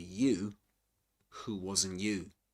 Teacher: she makes a contrastive focus. She stresses both both times the word you